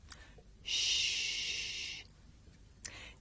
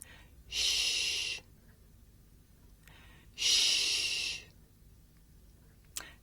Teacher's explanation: This is a voiceless consonant. It's pronounced sh. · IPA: ʃ